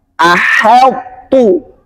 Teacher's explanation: Walaupun sifat to-nya masih kebaca, yaitu sifat itbaknya, itu tidak boleh mempengaruhi sifat istifalnya huruf ha. Maka dibacanya tetap tipis, tarqiq, itu ahaltu.